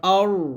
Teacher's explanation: তারপরে হামজা র জবর আর, এখানে রটা মোটো হবে, আলিফের জবর দিয়ে রকে ধরতে হবে। আর র হা জবর রহ, দেখুন এখানে রাহ বলবেন না, বলতে হবে রহ রহ, এরকম বাতাস বের করবেন, চিকন বাতাস।